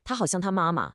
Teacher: 好像 uses a third tone, that dipping one, which is then followed by a fourth tone, the falling one.